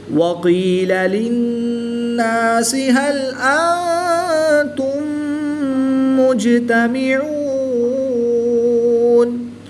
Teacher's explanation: نون مشدد میں ہمیشہ غنہ ہوتا ہے تو یہاں پر ہم غنہ کر کے پڑھیں گے · جیم حروف قلقلہ میں سے ہے اور جب حروف قلقلہ ساکن ہوں تو ان میں قلقلہ خوب ظاہر کر کے پڑھیں گے اور اس کو قلقلہ صغریٰ بھی کہتے ہیں۔